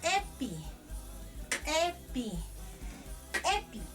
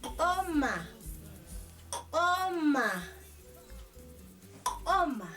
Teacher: Recuerden, por ser sonido postvelar, la I se va a pronunciar como si fuera una E abierta y la U como una O abierta